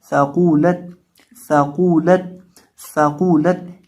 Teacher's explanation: इस कौफ को हम मोटा करके पढ़ेंगे, और इसके ऊपर पेश है तो इसको पढ़ते वक्त होंठों को गोल करके पढ़ेंगे। आगे लाम और ता है, इन दोनों को बारीक करेंगे और कौफ को मोटा भी करेंगे, कौफ को मोटा भी करेंगे। · इसको पढ़ते वक्त ज़ुबान की नोक सामने वाले ऊपर के दो दांतों के किनारे से लगा कर पढ़ते हैं